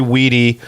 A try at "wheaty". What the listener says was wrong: you're saying wheaty, right? Not weedy, like pot.